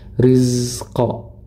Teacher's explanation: Huruf zai ini dia memiliki sifat, namanya sifat rokhawah. Jadi mengalir, suaranya mengalir, ya. Dialirkan baru masuk ke huruf berikutnya.